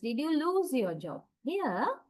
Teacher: Rather than emphasizing job here, I want to emphasize the word loose. So I stress it. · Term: tonic syllable